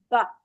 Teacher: दो होठों को मिलाया बा। और एक जुज बना दिया, और जब हटाया तो आवाज पैदा हुई बा। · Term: तसादुम